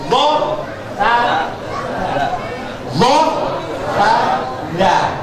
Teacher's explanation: Ujung lidah jenengan itu ditempelkan pada pangkal gigi seri yang atas. Itu tempatnya zo, tempatnya sa, tempatnya za. Itu berdekatan.